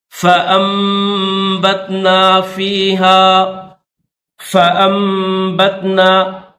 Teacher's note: نون ساکن اور با آ جائے تو وہاں پر نون ساکن سائلنٹ ہوگا، ابھی یہاں پر اس نون کو میم میں جو ہے وہ کنورٹ کر دیں گے